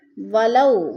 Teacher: واو ساکن سے پہلے لام کے اوپر زبر ہے تو ادھر وولین کو لمبا بھی نہیں کرنا اور جھٹکا بھی نہیں دینا